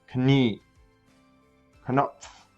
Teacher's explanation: Notice that I instantly go from the K sound to the N sound.